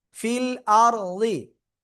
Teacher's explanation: র সাকিন ডাইনে জবর মোটা আওয়াজে পড়তে হবে